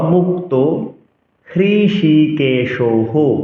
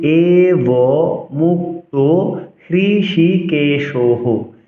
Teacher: সচরাচর সংস্কৃত শ্লোক উচ্চারণে বিসর্গের জন্য আমরা হ উচ্চারণ করে থাকি